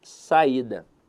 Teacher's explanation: a sílaba tônica dela está na penúltima sílaba. Então a verdade é que a palavra saída é uma paroxítona.